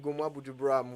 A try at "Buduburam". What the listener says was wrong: I beg you, say it right. It's Budu, not Buju. D-U, not J-U.